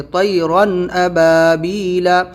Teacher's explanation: آپ کو دھیان دینا ہے رن کی آواز پہ، طیرن ابابیل، رن پہ بالکل بھی رکنا نہیں ہے، طیرن نہیں کرنا ہے۔ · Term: ظاہر